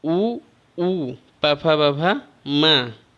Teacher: और इधर आपका अयोगवाह में प फ, ये ओष्ठ से बोले जाते हैं